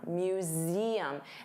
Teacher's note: notice you have that voiced Z sound, museum. And there are 3 sounds, museum, museum, museum.